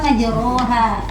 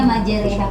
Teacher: Imalah itu miring ya, antara fathah dan kasroh ya.